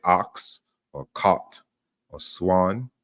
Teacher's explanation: so that's called an open back unrounded vowel